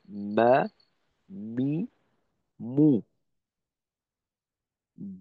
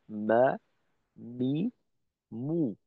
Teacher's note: তবে এর পার্থক্যটা হলো এমন, বা হবে দুই ঠোঁটের ভেজা জায়গা থেকে, অর্থাৎ স্বাভাবিক অবস্থাতে উপরের ঠোঁট নিচের ঠোঁটের সঙ্গে যেভাবে লেগে থাকে ওইভাবেই উচ্চারিত হবে, ব্যা, বি, বু। আর মিমের ক্ষেত্রে বলা হয় দুই ঠোঁটের শুকনো জায়গা থেকে, অর্থাৎ স্বাভাবিক অবস্থায় ঠোঁটটা যেভাবে থাকে, তো এই অবস্থার থেকে একটু ঠোঁটটাকে ভিতরের দিকে নিয়ে দুই ঠোঁটের শুকনো জায়গা থেকে আমরা মিমের উচ্চারণটা করব, যেমন মা, মি, মু।